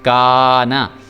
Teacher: اب کاف جو ہے یہ باریک ہے، یہ کاف پر کر کے نہیں پڑھنا ہم نے، اس لیے جو الف ہے وہ بھی موٹا کر کے یا پر کر کے نہیں پڑھا جائے گا، کیونکہ میں نے بتایا کہ الف جو ہے وہ ہمیشہ اپنے سے پچھلا جو حرف ہے اس کے اوپر ڈیپینڈ کرتا ہے، اس کے اوپر اس کا انحصار ہوتا ہے، اگر وہ باریک پڑھا جائے تو الف بھی باریک پڑھا جائے گا۔